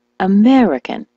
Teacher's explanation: the word American, as you know, is stressed on the meh